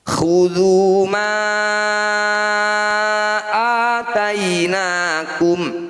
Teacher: Cara bacanya ma atau huruf yang bertanda layar. Kita panjangkan 5 harokat atau 5 ketukan. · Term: mad jaiz munfasil